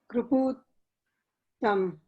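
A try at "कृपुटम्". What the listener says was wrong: It is Kriputam. Please see the letters properly. Please see what is the first letter. Not Kru.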